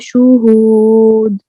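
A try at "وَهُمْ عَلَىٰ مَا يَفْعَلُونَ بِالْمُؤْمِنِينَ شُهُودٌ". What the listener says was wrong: शुहूद, कलकला कलकला छूट गया, शुहूद।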